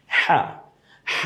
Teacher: গলায় একটু চাপ দিয়ে কণ্ঠনালীর ঠিক মিডেল পয়েন্ট